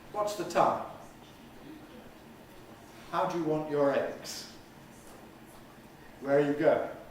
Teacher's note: if you want a serious answer to a serious question you've certainly got to give a falling tone on the wh question